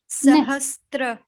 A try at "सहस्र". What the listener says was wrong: नहीं, त्र नहीं बोलना चाहिए, सहस्रा बोलना चाहिए, स पे केवल र है, त नहीं है, सहस्रा, सहस्रा,